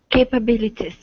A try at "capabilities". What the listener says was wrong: Okay, give me a long E at the very end instead of capabilities. Capabilities.